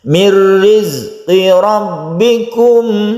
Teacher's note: nun mati bertemu dengan ra, idgham bila gunnah, tidak kita dengungkan, kita langsung masuk ke ra